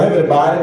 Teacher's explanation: Dicono everybody con la R, ma si scrive con la D